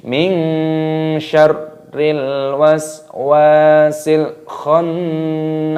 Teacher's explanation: Waswasil khannas, alif lam qamariyah, lamnya berharokat sukun, maka dibaca waswasil khannas. Khannas, ada nun tasdid, hukumnya dibaca gunnah berdengung, didengungkan baru dipanjangkan